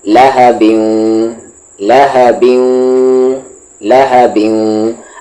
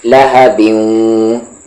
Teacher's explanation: آپ کے lips round ہونے چاہیے بالکل بیوں بولتے وقت، اور لپس میں گیپ بہت کم ہونا چاہیے